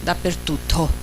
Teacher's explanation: Chi dice dappertutto in calabrese, allora sicuramente aspira l'ultima sillaba, dappertutto, che è quella atona. Poi però tende ad aspirare anche per, dappertutto, che è geminata e è, diciamo, prosodicamente meno rilevante rispetto all'ultima sillaba. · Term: aspirazione calabrese